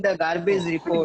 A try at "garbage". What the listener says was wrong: Garbage. It's garbage. It doesn't sound R. R is silent here. Here treat R as a silent word. Silent letter.